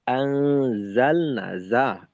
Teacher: এই জায়ের উচ্চারণটাকে আরেকটু স্পষ্ট করা, যেন জাল না হয়ে না যায়